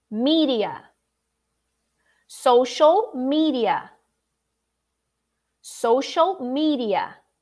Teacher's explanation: the d is pronounced very quickly almost like an r